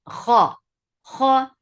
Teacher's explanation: kha and qaf and ghain are heavy letters, but they have infitah. So you are keeping your mouth open while you are making it heavy.